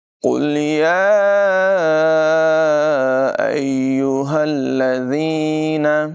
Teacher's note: یہاں مد منفصل ہے، اسے 2-3 الف تک یعنی تقریباً 2-3 سیکنڈ تک لمبا کر کے پڑھیں گے